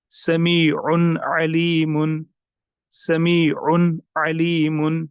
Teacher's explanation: یعنی تنوین کا نون ساکن جو ہے یہ بھی ظاہر ہونا چاہیے، اس کو ہم کہتے ہیں اظہار.